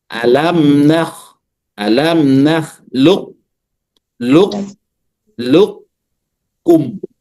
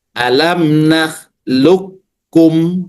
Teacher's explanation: Kalau idgham kalau diidgamkan kalau idgham kamil qofnya hilang